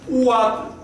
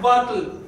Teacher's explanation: Te estás comiendo un saltillo que realmente hay y te estás comiendo un fricativo.